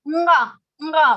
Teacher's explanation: when we have to say nga, then along with the kantha, you have to use your nose also. So nasal consonant, that is called nasal consonant, because we are using the place kantha, and also we are using our nose, nasal consonant.